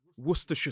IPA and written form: ˈwʊstəʃə (Worcestershire)